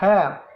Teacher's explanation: Penghambatan terjadi pada yang pertama, penyempitan dinding, faring, dan pangkal lidah. Contohnya H.